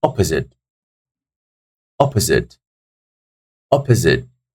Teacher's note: So the first syllable is taking the stress, guys.